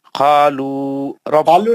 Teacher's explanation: قو گول منہ سے پڑھنا، مستعلیہ کر